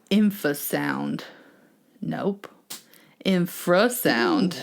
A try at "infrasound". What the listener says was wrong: There you go. Get that R in there. Infrasound. You sound like Sean Connery. Infrasound.